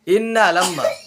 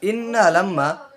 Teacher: ইন্নালাম্মা নুনে মিমে তাসদিদ হলে গুন্নাহ করিয়া পড়িতে হয়